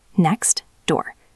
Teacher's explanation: Your tongue has to stop the air for the t and then move immediately for the d.